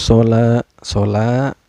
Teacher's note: karena ada Alif sebelumnya berbaris fathah cara bacanya dipanjangkan dua harakat